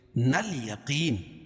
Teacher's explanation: الف لام کے بعد حروف قمری کے 14 حرفوں میں سے یا ہے تو یہاں لام پڑھی جا رہی ہے